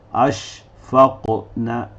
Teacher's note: بیچ میں بھی فتح حروف قلقلہ آئے گا، ہم اس کو بھی قلقلہ دیں گے